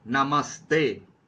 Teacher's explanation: फिर विसर्ग का अगर ओ हो तो क्या होगा, विसर्ग का स कैसे, जैसे नमः ते, तो यह जो है विसर्ग जो है अगर बाद में त है तो उसके पहले वह स में बदल जाता है, नमस्ते। इस तरह से आपको याद करना पड़ेगा नियम। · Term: विसर्ग संधि